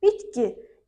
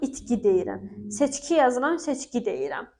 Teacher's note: İkincisi, yəni K öz cingiltili qarşılığı olan G-yə çevrilir.